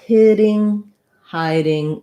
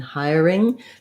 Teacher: no difference between the hitting and hiding for that t and d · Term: flap